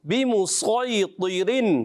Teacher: इसमें सौद मोटा करना है, तो मोटा करना है, रा को बारीक रखेंगे।